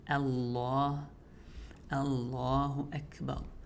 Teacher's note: Starting off light, then the lam becomes heavy, so Allah, Allahu Akbar, and then Akbar.